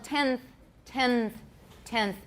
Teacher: Because we're getting ready to say the th sound, the n ends up interdental as well. That's called coarticulation or assimilation.